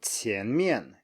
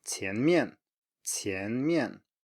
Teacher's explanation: next is rising plus falling